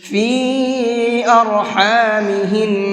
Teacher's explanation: فی کی یا کو تھوڑا سا زیادہ کھینچ کر کے پڑھیں گے، اس لیے کہ یہاں پر یہ چھوٹا مد ہے، اور اس چھوٹے مد کو مد منفصل بھی کہتے ہیں، اس کو 1 سے 3 الف کے برابر کھینچ کر کے پڑھتے ہیں۔